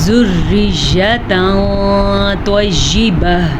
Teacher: ذریۃ طیبہ، پھر سے اخفاء کا قاعدہ ہو رہا ہے، کیونکہ تنوین کے بعد طوا ہے جو کہ حروف اخفاء میں سے ہے، تو ہم تنوین کو چھپا کے پڑھیں گے اور غنے کے ساتھ پڑھیں گے